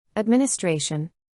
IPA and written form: ədˌmɪnɪˈstreɪʃən (Administration)